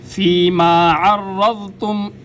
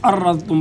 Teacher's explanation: فیما عرضتم، یہاں پر بھی بعض لوگ غلطی کرتے ہیں، عرضتم پڑھتے ہیں، عین کی جگہ حمزہ پڑھ دیتے ہیں جو کہ غلط ہے، بلکہ عین کی جگہ عین ہی کو پڑھا جائے گا